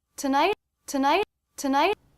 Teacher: I've made this a stop T rather than a flap T